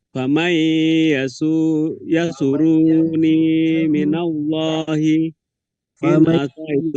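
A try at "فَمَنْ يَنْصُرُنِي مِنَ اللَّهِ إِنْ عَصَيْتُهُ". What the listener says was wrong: Yang suruni. Asaitu, jangan asaitu karena tidak ada wawunya. Jadi mesti pendek saja. In asaitu.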